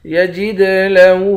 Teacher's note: دال پر قلقلہ کریں گے، ہا پر الٹا پیش ہے، ایک الف کے مقدار کھینچیں گے